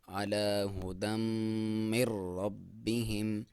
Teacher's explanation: دال کے اوپر 2 زبر ہیں جسے تنوین بولا جاتا ہے، اور اس کا ادغام ہے میم کے ساتھ، اور ادغام ما غنہ یعنی غنہ کے ساتھ آپ نے ادغام کرنا ہے۔ · علی ہدم من ربہم، اور یہاں پہ را کے ساتھ ادغام ہے، اور را کے ساتھ جب میم کا ادغام ہے وہ بغیر غنہ کے ساتھ ہے، یہاں پہ نون کو آپ نہیں پڑھیں گے۔